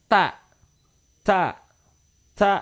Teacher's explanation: ketika menyebutkan huruf ta itu seolah-olah ada huruf s yang menyempit di antara huruf t